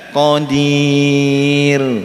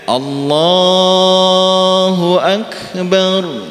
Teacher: Beda dengan Allahu akbar. Nah, itu ra-nya tebal, tafkhim nggih